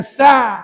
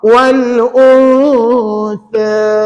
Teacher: Nak sebut tha, ujung lidah kena keluar. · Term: huruf tha